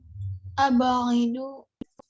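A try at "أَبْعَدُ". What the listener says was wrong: Nah, bukan abaidu tapi abadu.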